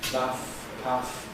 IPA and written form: pæθ (path)